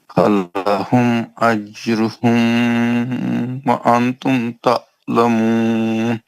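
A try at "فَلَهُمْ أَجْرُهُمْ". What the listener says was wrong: اجروہم کے میم کو کیوں کھینچا آپ نے؟ کیوں بولنا کیا اجروہم کے میم کو؟ اجروہم کے میم پہ غنہ کیوں کیا آپ نے؟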